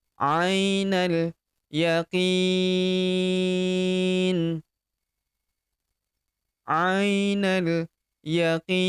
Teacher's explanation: Huruf qi kita panjangkan 4 sampai 6 harakat. Karena di depan huruf qi terdapat ya sukun sebelum huruf pemberhentian.